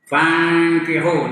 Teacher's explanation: nun kemudian kaf, ikhfa yang dengung